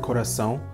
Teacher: the first A, which is pronounced A, is pronounced differently from the second A, which has a nasal un sound to it